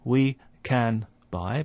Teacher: the n sound at the end of can is just before a b, so it starts to resemble a m sound